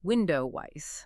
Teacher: >> Look at the phrase window is. A native speaker doesn't stop after the W sound in window. They insert a very subtle gliding consonant to bridge the vowels. It becomes window wise. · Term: phonetic linking